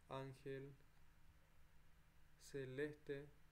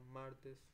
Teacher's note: Después tenemos llanos o graves. La sílaba tónica es la penúltima, ángel celeste.